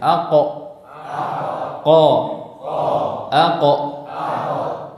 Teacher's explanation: Pangkal lidah bertemu dengan langit-langit lunak. · huruf qaf makhrajnya tidak di pangkal tenggorokan tapi di lidah, di pangkal lidah